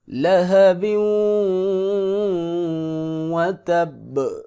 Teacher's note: با چونکہ قلقلے والی ہے لہٰذا اس پہ قلقلہ کریں گے۔ لہب وتب، قلقلہ لازمی ہوگا۔